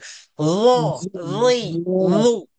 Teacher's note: Za ni pastikan jangan tertukar dengan zal, kena keluar lidah satu. Nombor dua, kena tebalkan sifat dia.